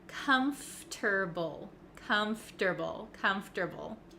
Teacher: even though it looks like calm for table we don't say that o r sound comfortable we don't say that we say comfortable comfortable so it · r sound comfortable we don't say that we say comfortable comfortable so it sounds like it goes from F to T okay comfortable comfortable comfortable so we are switching around some letter